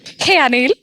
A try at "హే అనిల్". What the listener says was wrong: అలా కాదు, కొంచెం స్వీట్ గా. హే అనిల్.